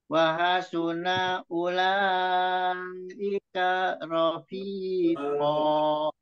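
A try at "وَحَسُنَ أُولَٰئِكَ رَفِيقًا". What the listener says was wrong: Naknya itu nggak panjang ya. Wahasuna ula, wahasuna ula, wahasuna ula ika rofiqo. Jadi yang pertama itu semuanya itu nggak ada mat ya.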